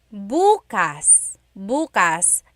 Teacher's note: emphasis is on the first syllable, that means tomorrow